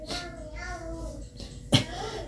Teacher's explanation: ada Mad thii panjangnya dua harakat